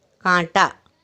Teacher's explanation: नाक और मुंह दोनों से आवाज़ आ रही है, मुंह से हवा एक साथ, हवा जो है बाहर निकल रही है ना, एक साथ बाहर निकलती है हवा। · मुंह और नाक से हवा एक साथ बाहर निकल रही है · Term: चंद्रबिंदु